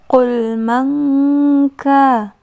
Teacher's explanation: Nun sukun bertemu dengan huruf kaf, ikhfa.